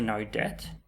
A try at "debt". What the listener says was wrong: With a T at the end, not death.